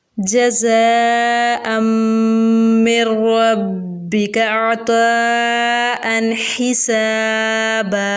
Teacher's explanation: ज़ा में सिटी की आवाज़ पैदा करेंगे और उसके बाद हमज़ा उसी कलमे में है तो मद्दे मुत्तसिल होगा, यानी ऊपर बड़ी मद भी है तो यहाँ पर मद्दे मुत्तसिल का कायदा होगा।